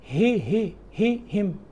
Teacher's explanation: ہا آخر سے گلے کے آخری حصہ جو سینے کی طرف والا ہے